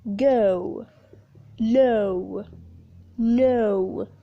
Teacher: The fourth one is 'ow' /aʊ/ for example 'how' /haʊ/, 'now' /naʊ/, house /haʊs/ the last closing vowel is 'o' /əʊ a combination of a schwa /ə/ plus the short /ʊ/